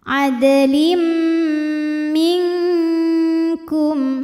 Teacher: Selanjutnya ada hukum idgham bi gunnah karena ada tanwin kasrah menghadapi huruf mim. Cara baca tanwinnya adalah dileburkan ke mim ya, masuk langsung adlim disertai bunyi dengungan, tahan.